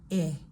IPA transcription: ɪ